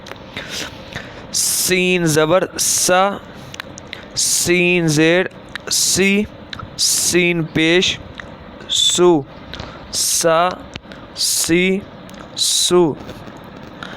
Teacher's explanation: سا جو ہے وہ زبان کا سرا اور اوپر کے اندرونی کنارے سے ادا ہوتا ہے، لیکن سین جو ہے وہ زبان کی نوک اور دونوں دانتوں کے اندرونی کنارے سے ادا ہوتا ہے، اور یہ ویسے بھی یہ حروف صفیریہ ہے، یعنی کہ سٹی کی آواز میں پڑھا جاتا ہے